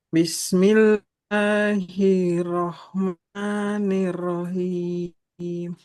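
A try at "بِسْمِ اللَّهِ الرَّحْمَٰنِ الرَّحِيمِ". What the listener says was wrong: Bismillahnya jangan bismillahirrohman. Nah, nanti jangan panjang-panjangkan huruf yang tidak ada huruf matnya. Bismillahirrahmanirrahim.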